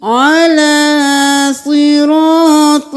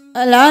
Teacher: عین کو گلے کے درمیان سے نکالنا ہے